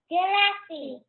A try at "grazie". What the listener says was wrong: Yep, we got to roll that R.